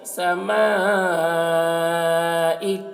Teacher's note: الف میں مد ہے تو زیادہ کھینچیں گے